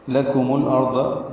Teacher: لام کاف باریک ہے، میم کو لام سے ملا دیں گے